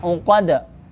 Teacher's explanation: Ini qalqalah sugro, kecil mantulannya.